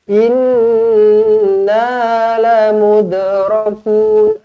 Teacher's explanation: Lamud, lantunkan di sini qalqalah sughra.